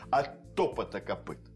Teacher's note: Если два согласных звука встречаются, да? От топота, там два «т», произносится не как два звука, а как один звук, но с задержкой.